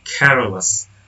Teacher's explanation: The stress syllable in care remains stressed in careless.